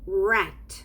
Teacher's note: you know the sound is totally different from the english sound in the english sound you produce it by curling up your tongue backwards and touching your upper palate more or less in the middle